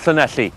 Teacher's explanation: let's visit Wales with its wonderful lateral fricatives as represented by the town of Llanelli